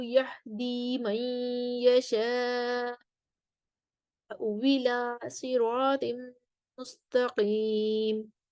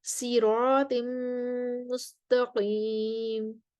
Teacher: ये तो सिरात पढ़ते हैं स्वाद के साथ। लेकिन कुंबुल और रवैस जो हैं वो सीन के साथ पढ़ते हैं सिरात। और इमाम हमजा के जो रावी हैं खलफ, वो यहाँ पर इशमाम करते हैं, यानी कि इशमाम के साथ पढ़ेंगे।